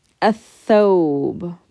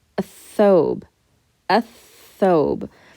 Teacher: So that lam got skipped altogether because the letter tha is a sun letter.